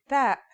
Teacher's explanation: the pronunciation is like the English T except you should release your breath with a strong burst of air